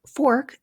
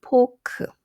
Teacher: And I've also listed some of the common substitutions, such as for the f as in fork, a Korean speaker might substitute the f sound with the p, and it would change from fork to pork